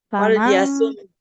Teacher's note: Jangan ditahan terlalu lama untuk huruf mim ya. Dia bukan rohwah. Aliran suaranya sebentar saja.